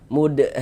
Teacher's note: Kemudian mad tabi'inya bertemu dengan ini nih, dengan huruf yang bertasydid, tapi dia dalam satu kata atau dalam satu kalimat, maka dia berubah menjadi mad lazim kilmi musaqqal atau kalimi musaqqal. Nah, kita panjangkan dengan panjang 6 harokat.